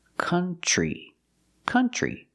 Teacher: We don't use the sound like foot and book. We use the sound like cup and up and cut. This is a relaxed sound.